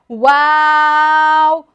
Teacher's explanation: دونوں ہونٹوں کو گول کریں گے تو واو ادا ہو جائے گا